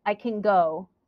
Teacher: is stressed so let's look at this sentence I can go go is the main verb so I'm going to make that louder and longer I will say I can go and can is not stressed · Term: word stress